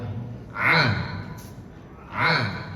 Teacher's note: Kalau ain pertengahan, di tengah-tengah tenggorokan.